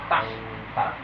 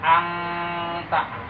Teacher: Ujung lidah kita bertemu dengan langit-langit mulut atas sebelum gigi.